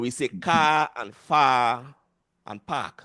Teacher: So the suppression of the R when it's either the last sound in a word or followed by a consonant sound.